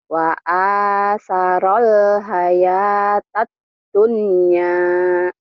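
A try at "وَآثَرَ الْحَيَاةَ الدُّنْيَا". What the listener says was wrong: Jangan ke hidung, jangan hayatan dunya. Jangan ke hidung. Dunya. Dunia, jangan dunia atau dunia. Jangan dunia.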